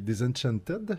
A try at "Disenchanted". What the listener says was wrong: Non, il faut que tu mettes le T à la fin.